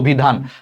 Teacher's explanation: অর পর হ্রস্বইকার আছে, অর উচ্চারণটা ওর মতো হয়ে গেছে